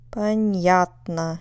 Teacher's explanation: it's on the second syllable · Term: stress